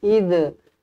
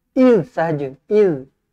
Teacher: bila huruf zal kalau mati dia tak sampai lantun